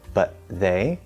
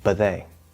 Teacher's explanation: it's just where the T just magically disappears, especially in faster speech. You can always enunciate it, it's fine, or you can stop it, that's fine.